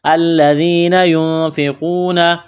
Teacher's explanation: یا ساکن سے پہلے زیر ہے، حروف مدہ یا ہے تو ایک الف کے برابر اس کو کھینچنا ہے۔ نون ساکن کے بعد فا ہے تو یہاں پر غنہ کریں گے، آواز ناک میں چھپائیں گے۔ اس ناک میں آواز چھپانے کو اخفا کہتے ہیں۔